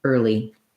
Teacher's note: I just have a vowel R, a light L, and a tense E sound, early. First syllable stress in that word as well.